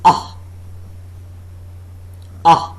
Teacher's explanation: The center of the tongue, or a part slightly in advance of center, is raised just above the fully open position. No contact being made between the tongue and the upper molars.